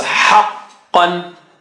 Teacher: qa is high sounding, so you gotta take it high. So haqqan, don't say ha, haqqan, ha.